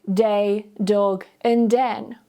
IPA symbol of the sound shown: d